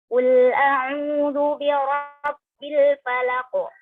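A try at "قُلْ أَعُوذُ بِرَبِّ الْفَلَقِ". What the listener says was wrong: Ini jangan masuk hidung.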